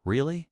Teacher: I can make my voice go up. Really? Now I'm curious.